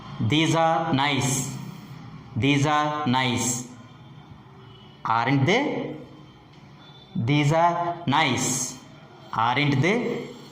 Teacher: the rising tone is also used with tag questions or question tags.